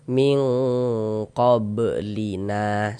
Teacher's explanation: Ming, jangan kita baca min, jangan kita samarkan. Ming, di bagian mingnya kita tahan suaranya, kita panjangkan sejenak sepanjang 2 harokat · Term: ikhfa hakiki ab'ad